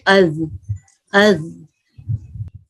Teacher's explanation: زال زبان کی نوک ثنایا علیہ کا سرا